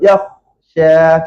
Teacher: Angin kha tak nak suara terputus. Suara dia mesti mengalir. Dia tak boleh putus, mesti bunyi hidup.